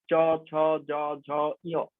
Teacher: যখন বলছি জিভ গিয়ে তালুতে লাগছে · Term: তালব্য বর্ণ